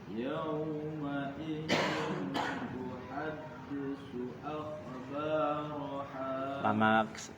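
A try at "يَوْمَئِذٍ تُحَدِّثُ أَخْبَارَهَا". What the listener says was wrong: Lama kasih sedikit ikhwanya dzin. Ikhfa lama kasih sedikit.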